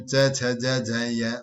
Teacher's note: ध्वनिया का उच्चारण जीवा के अग्र भाग के द्वारा कठोर तालु को स्पर्श करने से होता है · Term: तालु व्यंजन